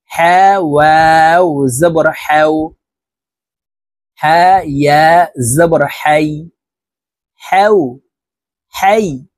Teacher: হা হরফ হলকের মধ্যখান থেকে উচ্চারণ করতে হবে কারণ হার মাখরাজ হলকের মধ্যখান থেকে হবে হা ওয়াও জবর হাও